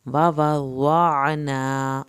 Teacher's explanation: عین کو حلق سے پڑھیں گے